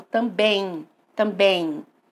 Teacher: Ele tem um pouco de som nasal, mas eu escuto como se fosse um I no lugar desse M. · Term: ditongo decrescente